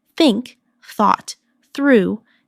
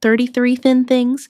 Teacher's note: Put your tongue between your teeth and push air out for think.